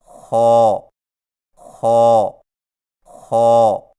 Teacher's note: خا کی ادائیگی میں زبان کی جڑ کو تالو کی طرف بلند کرتے ہوئے موٹی آواز میں پڑھیں، یعنی خو خو خو۔ · خا کی ادائیگی میں خرخراہٹ کی آواز پیدا نہ ہو